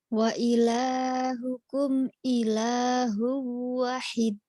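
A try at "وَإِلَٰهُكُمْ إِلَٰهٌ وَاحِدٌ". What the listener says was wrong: wa-nya panjang. Wahid. Wa-nya panjang. Wa ilahukum ilahu wahid.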